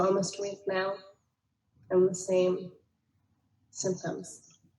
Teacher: there's a little bit of a hypernasality to it. There's that nasal twang that's sitting in this patient, but it's really subtle, and you have to listen very carefully in order to hear that.